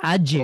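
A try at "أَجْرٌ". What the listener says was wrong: কলকলাটা একটু বেশি করে করার ট্রাই করব।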